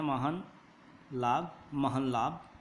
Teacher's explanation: है हलंत है तो आधा ल प्रयोग किया जाएगा ऐसे ही न के बाद ल रहे तो वहां पर अनुनासिक बन जाता है यहां पे देखिए अनुनासिक के बाद ल आधा हो जाता है